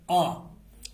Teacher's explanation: जैसे ही हम आ का उच्चारण करते हैं तो हमारा मुंह पूरा खुल जाता है।